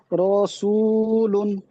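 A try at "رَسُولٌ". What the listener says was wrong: রটা একটু টান হয়ে যাচ্ছে, রসুলুন।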